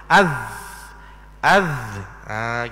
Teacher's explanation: kita hak atas dan bawah Az Az gitu Tapi kalau diperhalusi masa kita sebut Az itu hujung lidah kita ada terkena belakang gigi kapak yang atas yang dipanggil gusi maka sebab itulah dipanggil huruf ini huruf gusi · Mudah-mudah kata gigit lidah, hujung lidah tu di antara dua gigi kapok kita, hak atas dan bawah.